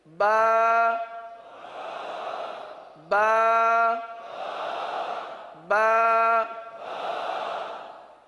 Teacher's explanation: با یہ ہونٹوں سے ادا ہوتا ہے. اب ہونٹ کے دو حصے ہیں، ایک ہے ہونٹ کا خشک حصہ اور ایک ہے ہونٹ کا تر حصہ. · اب ہونٹ کے دو حصے ہیں، ایک ہے ہونٹ کا خشک حصہ اور ایک ہے ہونٹ کا تر حصہ. اب یہ با جو ہے ہونٹوں کے خشک حصے سے ادا نہیں ہوگا بلکہ تر حصے سے ادا ہوگا